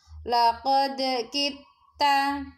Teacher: Idgham mutajanisen, yaitu bertemunya dua huruf yang sama makhrajnya tapi beda sifat. Maka huruf yang pertama dalnya ini melebur ke huruf yang kedua, ke huruf ta. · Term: Idgham mutajanisain